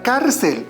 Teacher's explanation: Observa que la palabra cárcel termina en la consonante L. Y la mayor fuerza de voz está en la penúltima sílaba. Por lo tanto, es necesario colocarle la tilde.